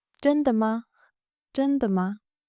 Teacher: 的 is a neutral tone. 吗 is also a neutral tone. But you could rise it for question.